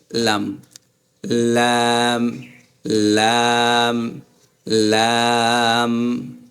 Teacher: এই আমাদের জিবার আগা এই উপরের দাঁতের গোড়ার দিকে লাগতেছে লাম লাম দেখছেন লাম আগার দিকে গোড়ার দিকে থাকবে লাম লাম